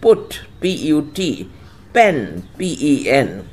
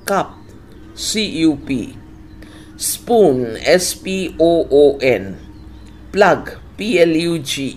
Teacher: শব্দের গোড়ায় ও স্বরধ্বনির আগে কিংবা দুটো স্বরধ্বনির মাঝখানে যে পি বসে তার উচ্চারণ PH